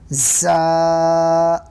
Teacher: زبان کی نوک کو نیچے کے دانتوں کے جڑ میں لگانے سے زا ادا ہوتا ہے